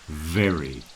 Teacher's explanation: a lot of people, especially here in Bilbao, when they're trying to do the V, they often pronounce it as a B.